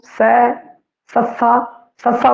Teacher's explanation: सै दे समय जेड़ा अपनी जीभ है वो दंत पठार है उसनूं छो रही है · सस्सा जो बोलते हैं तो जेडे जीभ है वह दंदा थोड़ी थोड़ी छो रही है